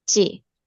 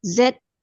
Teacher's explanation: jadi kalau C dia lebih ada nafas yang keluar. Sementara kalau huruf Z sedikit aja.